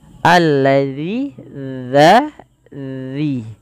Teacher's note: ujung lidah kita menempel dengan gigi saring atasnya